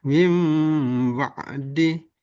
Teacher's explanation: Nunnya berubah menjadi huruf mim, mim sukun, nun sukun menjadi mim. Nah, ini disebut dengan iqlab.